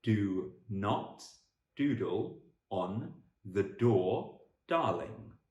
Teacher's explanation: You have to vibrate your vocal chords quite a lot in a da, and you can really feel it. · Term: D sound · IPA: /d/